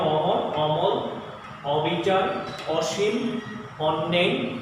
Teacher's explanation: অর্থাৎ বিবৃত অ হবে বা অথবা স্বাভাবিক অ উচ্চারণ হবে